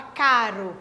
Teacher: produz um som um pouco mais fraco do que morrer que é um r mais forte